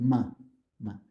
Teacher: if you use the lips and your nose you get ma so for example the labial nasal sound is the ma sound